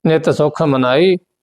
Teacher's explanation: ਅਧਕ ਖਖਾ ਸੁਖ ਇਸ ਨੂੰ ਕਸ ਕੇ ਬੋਲਣਾ